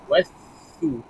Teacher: sa ni adalah sa yang nipis, ujung lidah ujung lidah pada hujung gigi atas depan